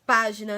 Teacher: nas palavras página, né, que a sílaba tônica é pá